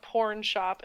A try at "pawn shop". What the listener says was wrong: We just pronounce the A.